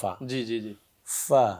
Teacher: سامنے کے اگلے 2 دانت نیچے کے ہونٹ کے اندرونی حصے سے لگے تو فا ادا ہوگا